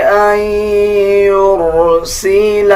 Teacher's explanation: نون کے اوپر جزم آ جائے اس کے بعد یا کے اوپر شد آ جائے تب بھی ہم ناک سے آواز نکالتے ہیں یعنی غنہ کریں گے